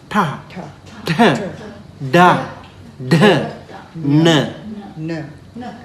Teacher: tongue curling backward and tapping the upper palate.